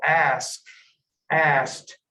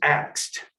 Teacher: this reversal of sounds it's called metathesis